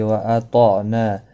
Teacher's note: طا مستعلیہ ہے پر پڑھا جائے گا، عین ساکن کو ہلانا نہیں.